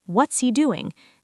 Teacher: The H is very quiet.